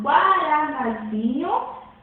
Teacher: a subtônica é na, pois era a tônica da primeira, guaraná. Então, guaranazinho é um derivado de guaraná.